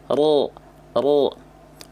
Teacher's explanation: lidah ya teman-teman sekalian ya pangkal lidahnya diangkat ro ro oh karena pangkal lidah diangkat otomatis bunyi vokal a ketika fathah ro fathah itu vokal a-nya pasti akan jadi O tanpa harus memonyongkan Bi bibir bunyi vokal o dihasilkan bukan karena kita memuncung kan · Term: tafkhim